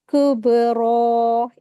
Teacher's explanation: हुरूफ कलकला है यहां पर कलकला का रूल अप्लाई होगा तो आवाज यहां पर बा की बाउंस होगी और फिर रा के ऊपर खड़ी ज़बर लगी इसको दो रकात खींचेंगे।